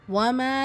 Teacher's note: மீம்ல அலிஃப் மத்தா 2 ஹரக்கத் அளவு நீட்டம் கொடுத்து ஓதணும்.